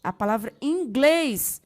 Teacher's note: A palavra inglês, sua sílaba tônica é o glês, terminada em es, acentua-se também.